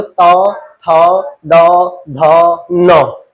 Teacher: अब तौ वर्ग को देखोगे आप तो इनको बोलते हुए दांत का प्रयोग हो रहा है। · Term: दंत ध्वनि